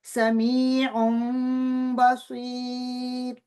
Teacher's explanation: तो उन जो है वो उसकी नून, उसमें जो नून थी उसकी आवाज़ को मीम में बदल दिया गया। · नून साकिन या तनवीन की आवाज़ जो होती है, उसको मीम साकिन में बदल देना। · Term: इकलाब